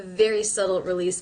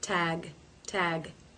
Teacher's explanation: a very subtle release back there at the back of the throat definitely not a G tag tag not a full G sound